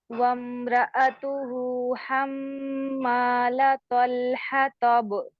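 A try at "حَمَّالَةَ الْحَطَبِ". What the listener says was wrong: तल हताब ता ये मोटी नहीं है, तल तल बारीक है।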